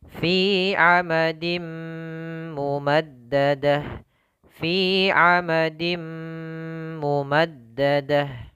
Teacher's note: Terakhir fi 'amadim mumaddadah, fi 'amadim mumaddadah ya, dibaca dengan gunnah amadim. Ini termasuk idgham bi gunnah, idgham bi gunnah.